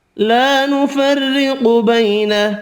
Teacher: را باریک پڑھیں گے زیر کی وجہ سے، قاف حروف مستعلیہ پر پڑھیں گے، بیالین پڑھنا ہے۔